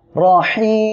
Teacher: হা অক্ষরটা গলাটা চেপে বাতাস বের করে উচ্চারণ করবেন। এটা হলো হামসের অক্ষর।